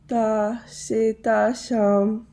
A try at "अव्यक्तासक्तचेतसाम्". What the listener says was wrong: Chetasam. This is cha. Not S, not Seta. Cheta, as in chair. Sam.